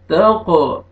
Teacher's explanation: खौफ कलकला double sound आएगा